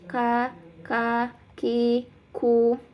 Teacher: Ka bisa dirasakan ka paling belakang, maju sedikit, lebih ke depan itu ka ki ku. Nah, untuk huruf ka ini punya sifat hamas ya. Jadi keluar ada nafas yang mengalir